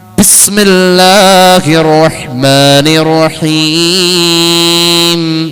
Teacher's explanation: മൂക്കിലൂടെ അവസാനിച്ചു വന്ന മീമിന്റെ നാഥം രണ്ടു ചുണ്ടാൽ പിന്നെയും ചേരേണ്ടി വന്നു